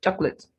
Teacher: the second O is not pronounced, just chocolate